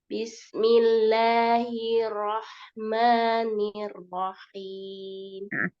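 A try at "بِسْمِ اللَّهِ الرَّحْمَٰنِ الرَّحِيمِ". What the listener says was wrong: Ro-nya ditasdid lagi ya, ditasdid, dinaikkan suaranya. Bismillahirrahmanirrahim gitu ya. Bismillahirrahmanirrahim.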